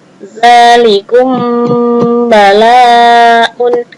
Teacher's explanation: ketika mim sukun bertemu dengan ba, bacanya samar-samar ya, seolah bilang mim juga seolah bilang ba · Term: ikhfa syafawi